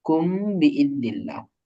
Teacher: মিম সাকিনের পরে যদি বা আসে তাহলে আমরা গুণনা করিয়ে পড়িতে হয় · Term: ইকফায়ে শাফাই